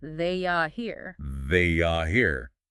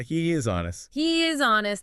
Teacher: A Y or a W sound can often intrude between vowels. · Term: intrusive sounds